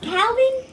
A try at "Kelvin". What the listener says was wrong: Kelvin, bro. A whole lot different. You saying it without the L.